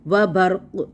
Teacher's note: ورعدوں، ورعدوں کو دیکھیں تو یہاں پہ تنوین کے بعد یرملون کا واو۔ وبرق، اب یہاں پہ کلکلا ہوگا کیونکہ قاف کو ہم ساکن کر دیں گے